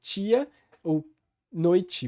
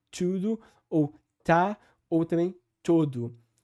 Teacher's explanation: O T só vai ser palatalizado, ou seja, só vai ter esse som de tch, quando ele estiver antes de um I, ou quando estiver antes de um E, que soa com um I. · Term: palatalização do T